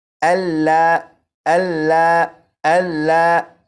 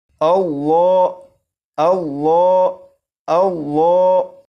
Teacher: لفظ اللہ کے لام کو پور یعنی موٹا پڑھیں گے